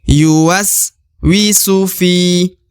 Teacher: karena terdapat ya sukun di depan huruf fi, maka harus diayun sekali atau dipanjangkan 2 harokat